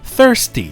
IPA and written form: ˈθɜːrsti (thirsty)